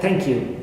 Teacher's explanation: So thank you in English also has falling intonation usually.